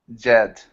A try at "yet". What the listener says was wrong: yet. Not jet. In English, we say yeah, yet. Look at my lips, like I'm smiling. Yet.